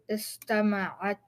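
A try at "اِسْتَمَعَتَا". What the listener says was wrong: So now the way you're saying it is istama'atta, like that. You see the shadda here? Get rid of it. Istama'ata.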